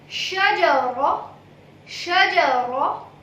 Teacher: My lips are not owing while producing Ra.